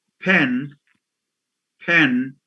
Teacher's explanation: a word like like pen pen is accompanied by aspiration by a puff of her this